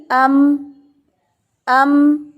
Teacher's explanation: ہم پڑھیں گے، اب ہم یہاں پہ من نہیں پڑھیں گے، بلکہ تھوڑے سے جیسے، کیونکہ ہمیں پتہ ہے کہ نون کی آواز کو میم میں بدلنا ہے، اور میم جو ہے وہ دونوں ہونٹوں کو آپس میں ملانے سے ادا ہوتا ہے